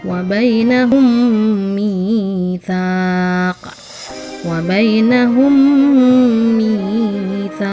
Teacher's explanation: Yang selanjutnya lagi adalah idgham mutamatsilain, yakni adalah apabila huruf mim sukun dengan huruf mim bertemu, didengungkan sebanyak 2 ketukan.